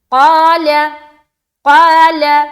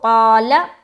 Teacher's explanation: क़ा में अलिफ मद्दा करेंगे और क़ाफ को मुंह भरकर बोलेंगे, क़ाफ मोटे हुरूफ में से है